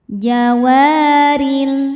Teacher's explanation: Huruf ro dibaca secara tarqiq. Sebab ro berharakat kasrah.